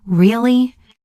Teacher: Rising tone sounds curious or surprised.